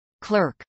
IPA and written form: klˈɝk (clerk)